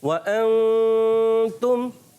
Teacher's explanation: نون کو چھپائیں گے اور غنہ کریں گے, یعنی ناک میں آواز لے کر جائیں گے اور نون کو کلیئر نہیں کرتے, ظاہر بالکل. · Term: اخفا